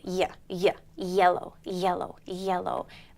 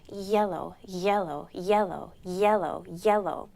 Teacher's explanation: the back of my tongue goes up against the roof of my mouth and the tip of my tongue is is down resting against